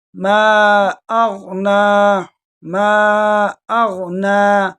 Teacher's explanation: میم کے ساتھ جو الف ہے اس کے ساتھ مد منفصل ہے، اس کو جو ہے نا کھینچ کر پڑھیں گے